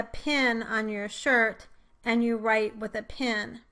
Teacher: Also, notice that some dialects do not make a distinction between the I as in bid and E as in bed vowels before the nasal consonant N. So for these talkers, the words pin and pen will both be pronounced as pin with the I vowel.